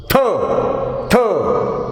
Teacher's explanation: Th is voiceless dental fricative